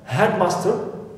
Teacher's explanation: Stress master, not head, because it is an exception.